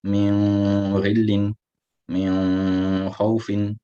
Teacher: And like in the normal ikhfa, the ikhfa will either be full or flat depending on the letter that follows. Both the ghain and the kha, they are letters of isti'la, so will both be read full